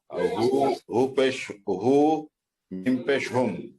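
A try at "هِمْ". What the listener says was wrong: হু নাই, অক্ষরটা হচ্ছে হা। হা মিম হুম, কাইদা হুম।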